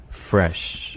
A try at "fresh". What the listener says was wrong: fresh. 지금 R 발음 때문에 긴장을 해서 sh 발음 이렇게 나는데 fresh.